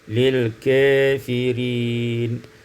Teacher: imalatu fathatil kaf menjadi wal alif, diimalahkan fathah kaf dan alif menjadi lil kafirin.